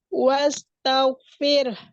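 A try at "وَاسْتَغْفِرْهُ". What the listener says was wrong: Fir. Agak besarin lagi sedikit, Bu. Wastagfir. Karena tempat keluarnya dari pangkal tenggorokan.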